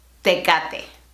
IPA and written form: te.ˈka.te (Tecate)